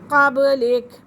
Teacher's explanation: قبلک کے اندر با کے پر قلقلہ ہو رہا ہے